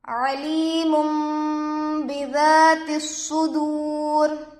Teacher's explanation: تنوین کے بعد با آ کر ہے، نون کو میم سے بدل کر گنہ اور اخفا کے ساتھ پڑھیں گے، اس کو اقلاب کہتے ہیں۔